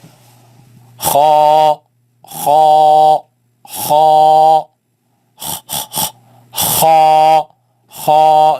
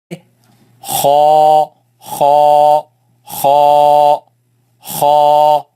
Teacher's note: It comes from the top part of the throat. You see, the throat has 3 parts. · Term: heavy letter